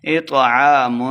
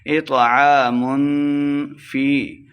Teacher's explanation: تو کو موٹا پڑھنا ہے، اطعام یعنی اخفا یعنی غنہ کر کے پڑھیں گے ، اطعام فی، یا مدہ دو حرکات لمبا کر کے پڑھیں